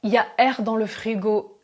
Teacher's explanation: attention contraction il y a devient y a